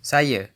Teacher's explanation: Final a is usually pronounced as a schwa in Malay, at least in Malaysia.